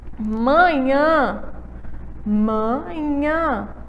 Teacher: aí a sílaba forte é a final, certo? E ela é uma oxítona.